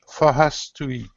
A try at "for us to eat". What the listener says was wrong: you're pronouncing an H when there's not an H at the beginning of the word